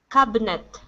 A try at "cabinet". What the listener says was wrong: So almost. So you're adding that I right in between. So instead of cabinet, it's cabinet. Cabinet.